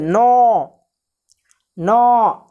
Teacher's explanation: नौ तो नाक से ज़्यादा आ रहा है